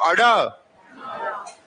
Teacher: उच्चारण करने के लिए आप अपनी जीहा को पलट कर मुर्दा पर मारते हो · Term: उत्क्षिप्त